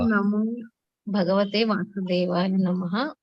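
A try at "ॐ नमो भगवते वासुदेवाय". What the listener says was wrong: No Nama after that. Om Namo Bhagavate Vasudevaya.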